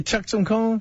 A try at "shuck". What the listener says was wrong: Shuck. Shuck. Shuck. Yeah, shuck. Ah, shucks. Yeah, but you said chuck.